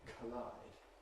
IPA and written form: kʰəˈlaɪd (collide)